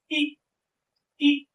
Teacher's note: मैं बोल रहा है इ तो हमारी जीभ कहां लग रही दांतों के पीछे हिस्से में लग रही है। तालु में लग के जीभ हमारी दांत के पीछे वाले हिस्से में लग रही है। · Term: अग्र स्वर